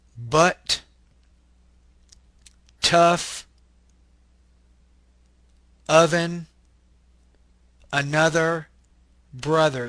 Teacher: So the sound is kind of like a uh. This is a mid-central, unrounded, lax vowel. The schwa. Uh. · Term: stressed schwa or wedge